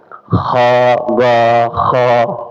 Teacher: Jadi bukan di langit-langit kha ya, kha di belakang nih, di bawah nih, di kerongkongan paling atas nih